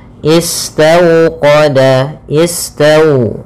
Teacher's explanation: Bacaan lin yaitu suaranya adalah lembut pada lafal waw sukunnya. Istawqada, istaw dengan dimonyongkan bibirnya.